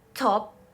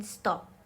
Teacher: T in English, aspirated in top and unaspirated in stop.